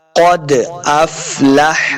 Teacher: قد قاف کو موٹا پڑھیں گے، حروف مستعلیہ سے ہے قاف ، دو نقطوں والا قاف جو ہے یہ حروف مستعلیہ سے